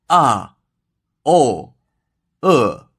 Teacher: the fourth tone is a descending tone with a tonal value of 5/1